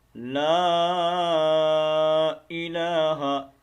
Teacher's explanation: वल मग़रिबि ला, ये मद है, इसको छोटी मद भी कहते हैं, और तजवीद की इस्लाह में देखें तो इसको मद मुनफसिल कहा जाता है। ये दो अलिफ के मुताबिक हमने इसको लंबा करके पढ़ना है